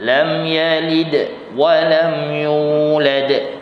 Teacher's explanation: Maksudnya tanda sukun. Baik, jadi bila sukun dal itu lam yalid, maka terhasillah qalqalah, lantunan